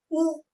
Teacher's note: होठों का वृत्त बन रहा है जब ओठ गोलाकार हो रहे तो वृत्ताकार या वृत्तामुखी भी बोल सकते हैं